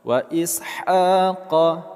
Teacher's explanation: Ha, kita panjangkan dua harakat.